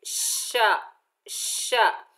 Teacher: शीन के ऊपर ज़बर, बगैर खींचे पढ़ेंगे। शीन को अदा करते वक्त हमारी आवाज़ फैलती हुई महसूस होती है।